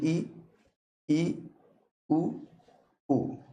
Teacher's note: वे ध्वनियां जिनका उच्चारण करते समय मुंह बहुत कम खुलता हो। बहुत कम खुलता हो संवृत ध्वनियां कहलाती हैं। · इनके उच्चारण में मुंह बहुत कम खुलता है। आप बोल के देखिए, ई, उ, ऊ, मुंह नहीं खुलता है, बहुत कम खुलता है। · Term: समृद्ध ध्वनियां